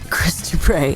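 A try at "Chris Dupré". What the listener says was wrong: Not Krista Prey, but Chris Dupre. With the accent on the end. Accent aigu.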